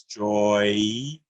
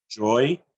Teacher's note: Or we can say joy, 1 syllable. And if you listen to how the mouth moves, it's joy, sort of an oi change of the sound, joy. It's still 1 syllable.